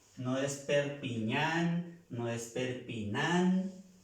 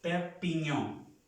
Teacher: La A con la N, O nasal.